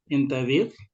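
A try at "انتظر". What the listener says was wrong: Tapi intadir. Enggak, itu bertanya. beda. Nadanya itu jangan nada tanya. Intadir. Itu bertanya.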